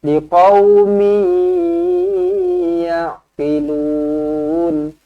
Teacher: jumpa dengan ya, senyum, dengungkan dua harakat, idgham ma'al gunnah